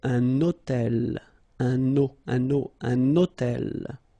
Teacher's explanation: I'm making this little liaison, this little link between the two